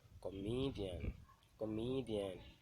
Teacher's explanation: An example of primary stress on penultimate syllable is the word comedian.